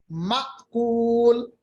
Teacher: हमजा पे जब भी जज्म होगा तो इस पे झटका होता है